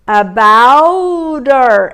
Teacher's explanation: O que eu faço com esse her? Olha só, eu corto o H, eu tenho um about terminado em T, eu vou juntar esse T com o E do her, já que esse H tem som, her, mas eu cortei e vou ficar com about her.